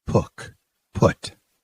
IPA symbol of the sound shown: ʊ